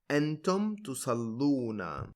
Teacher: And now because the ya and the waw with sukoons on them cannot go side by side, the weak vowel, which is the ya, is dropped, and the kasra preceding the weak vowel, the one on the lam, gets converted into a dhamma for ease of pronunciation.